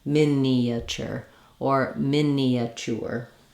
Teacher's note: the three- syllable version if you want to use four syllables think of it as you just naturally have that gliding Y sound as you move from the front e to the back uh sound or Central uh sound